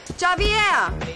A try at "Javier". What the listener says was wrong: It's Javier. It's pronounced like an H. Javier.